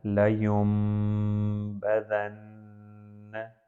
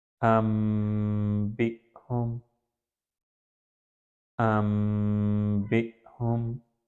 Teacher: اب یہاں پر یا کے بعد نون ہے اور نون کے بعد با، تو یہاں پر نون نہیں پڑھا جائے گا، نون کو میم میں تبدیل کر دیا گیا، تو اس کو پڑھا جاتا ہے لَيُنبَذَنَّ۔